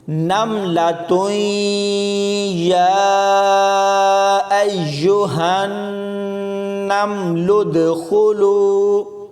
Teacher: نملۃ یا ایھا النمل ادخلوا، اس میں میم کے اوپر کلکلا نہیں کرنا، بہت سارے لوگ میم کے ساتھ ملاتے ہوئے کلکلا کرتے ہیں، تو ایسے یہ غلط ہوگا۔ تا کو یا کے ساتھ ملاتے ہوئے ادغام بالغنہ ہوگا · تا کو یا کے ساتھ ملاتے ہوئے ادغام بالغنہ ہوگا، اور لام کو دال کے ساتھ ملاتے ہوئے کلکلا کیا جائے گا